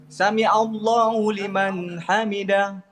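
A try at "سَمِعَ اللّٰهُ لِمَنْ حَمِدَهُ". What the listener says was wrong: Jadi ini bukan sami'a, sami'a baik tak pakai huruf hamzah. Sami Allah jangan salah kan tahu huruf in dengan huruf hamzah.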